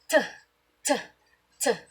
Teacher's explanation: Kung mapapansin natin, walang masyadong vibration kaya ito ay walang tinig.